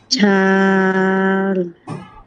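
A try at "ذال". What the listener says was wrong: না না পপে তো জিহ্বাটা লাগান নাই, জিহ্বাটার আগাটার সাথে একদম সামনের যে কোণাটা, এই কোণাটার সাথে আপনি উপরের দাঁতের আগাটা লাগান। উপরের সামনে যে 2টা দাঁত, ওই দাঁতটা আগে লাগান, তারপর আপনি উচ্চারণটা করেন।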